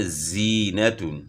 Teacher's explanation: زا کی آواز باریک اور سیٹی والی ہوتی ہے